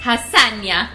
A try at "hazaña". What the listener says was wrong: No. Hazaña. So remember, the H has no sound.